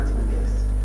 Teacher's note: هتبقى ملتقطه او ملتصقه بالحرف الذي بعدها او مشبوكه بالحرف الذي بعدها، يعني اللام مشبوكه في النون في كلمه الناس، وكأن اللام والنون هما حرف واحد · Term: اللام الشمسيه